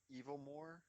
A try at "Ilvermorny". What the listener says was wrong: No, you said evil. You said it like with a V before the L.